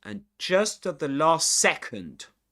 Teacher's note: Remember to stress the words just. Just and second.